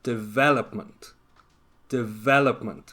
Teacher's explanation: it's the same with the noun development development so the stress is on the second syllable